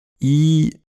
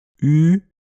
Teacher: Troisième paramètre, l'arrondissement des lèvres. I, je fais rien de spécial avec les lèvres. U, la seule différence c'est que les lèvres sont arrondies.